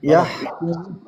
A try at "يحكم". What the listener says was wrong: لا مو يح مو يح يح يحكو يحكم. أنت تبالغ في الهمس بحيث تطلع عندي شحطة في الحاء.